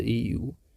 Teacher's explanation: संवृत्त स्वर के उच्चारण में मुख द्वार लगभग बंद रहता है